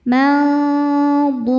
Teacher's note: Karena ada huruf qalqalah yaitu dal yang sukunnya sukun karena berhenti ya, dan ada di akhir bacaan. Maka huruf dal ini bunyi pantulannya lebih besar. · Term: qalqalah kubro